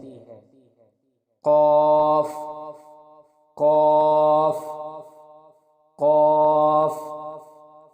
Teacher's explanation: قاف کے مخرج کی ادائیگی زبان کی جڑ اور تالو کے نرم حصے سے ہوتی ہے